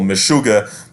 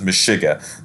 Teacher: the U sound is pronounced U in the north, and then the Galicianers would pronounce that E